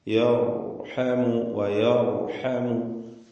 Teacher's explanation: യർഹമുവിൽ റാഇനെ തഫ്ഖീം ചെയ്യുക, തടിപ്പിച്ച് റാഇനെ ഉച്ചരിക്കുക. സാക്കിനത്തായ റാ തൊട്ടു മുമ്പിൽ ഫത്ഹ.